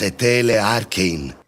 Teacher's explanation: We get etelei instead of etelei, which is important rhythmically. And the long diphthong isn't quite audible. I don't really hear a, I just hear e. Because another vowel follows, that doesn't bother me too much.